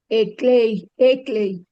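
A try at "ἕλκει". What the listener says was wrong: A ver, espíritu rudo. Helkei, Helkei.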